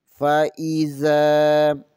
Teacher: ان دونوں حرفوں کو بغیر کھینچے، بغیر جھٹکا دیے پڑھیں گے۔ زال زبر کے آگے الف مدہ ہے، اسے ایک الف کے برابر کھینچیں گے